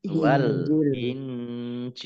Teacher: Wa anzalat taurata, ro fathah berdiri mat tobi'i, wal injil, alif lamnya alif lam komariah, ditandai dengan lamnya dibaca sukun. Wal Injil, nun sukun bertemu dengan huruf jim, bacaan ikhfa dibaca samar-samar. Jim kasroh ya sukun mat tobi'i, tetapi karena bertemu dengan huruf terakhir yang dibaca sukun karena waqaf, maka menjadi mat arif lisukun. · Jim kasroh ya sukun mat tobi'i, tetapi karena bertemu dengan huruf terakhir yang dibaca sukun karena waqaf, maka menjadi mat arif lisukun. Mat arif lisukun dibaca panjang, boleh 6, boleh 4, boleh 2 harokat